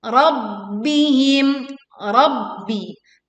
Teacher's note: Tekan ba bertasydid, kemudian tekan mim sukun dengan suara yang jelas.